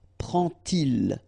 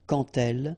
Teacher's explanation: you won't pronounce it like d to make the liaison, but you will pronounce it like t